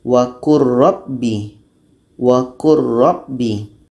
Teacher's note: Wa qur rabbi a'udzu bik. Bunyi lam masuk kepada ro. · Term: idgham kamil